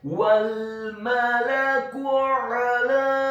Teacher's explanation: huruf ainnya ditekankan keluar dari tenggorokan bagian tengah fathah satu harokat, huruf lamnya dibaca tipis tarqiq fathah 4 sampai 6 harokat.